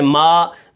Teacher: اب میم کو پڑھتے وقت ناک میں آواز نہ جائے، جیسے میم کھڑا زبر ما، ما ہو جائے.